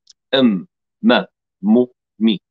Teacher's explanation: الميم لا تخرج إلا مع صوت من الخيشوم. هذا الصوت الغنة إما أن يكون قصيرا، وإما أن يكون طويلا، إما أن يكون محققا أكمل ما يكون، وإما أن يكون غنة عادية فقط لمقدار إخراج هذا الحرف.